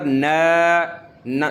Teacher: ناک سے آواز نہیں نکالنی ہے، منہ سے نکالنی ہے، منہ سے آواز نکالنی ہے، ناک سے نہیں۔